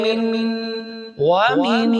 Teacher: نون ساکن کے بعد حروف حلقی میں سے کوئی حرف نہیں ہے تو یہاں پہ غنہ بھی ہوگا